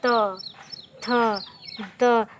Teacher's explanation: जब हम इसको बोल रहे हैं तो हमारी जीवा जो है पूरी तरह से दांत को स्पर्श कर रही है।